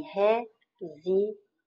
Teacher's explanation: Resiliência, então você tem resiliência, aí sim você tem uma paroxítona, ou seja, você tem a penúltima sílaba mais forte, você tem o fonema I aqui, então ele é uma semivogal, porque está pronunciado na mesma sílaba com uma vogal